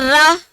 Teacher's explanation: अब बोलो र, तो बताने की जरूरत नहीं है कि जीभ कहां जा रही है, मूर्धा पर।